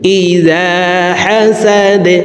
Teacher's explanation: দাল যেহেতু কলকলার হরফ নিচের দিকে ধাবিত করে ধাক্কা দিয়ে সাকিন করব